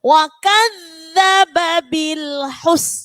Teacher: Ada lam sukun, tidak boleh dipantulkan. Wa kadzababil hus, enggak boleh bil hus.